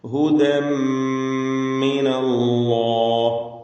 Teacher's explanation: അല്ലാഹ് എന്ന ഇസ്മുൽ ജലാല അതിലുള്ള ലാമിന് തഫ്ഖീം കൊടുക്കണം, തടിപ്പിച്ച് സ്വരഭാരത്തോടെ ഉച്ചരിക്കുക